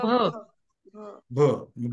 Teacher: जेव्हा भ आपण म्हणतो तेव्हा दोन्ही होठ आपले एकमेकांना लागतात, बरोबर. ओष्ठ्य वर्ण झालं.